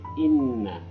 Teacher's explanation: Yang ketujuh itu adalah inna gunnah ya, gunnah itu didengungkan sedikit, dibaca dengung karena ada di sini tasdid ya